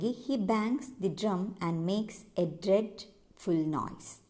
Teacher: each beat or unit with an unstressed syllable followed by a stressed syllable